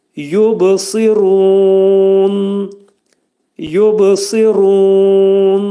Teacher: Deməli ru burada qalın oxunacaq və məddi ariz olacaq. Ayə sona getdiyinə görə ruhu dörd hərəkə miqdarında uzadılacaq.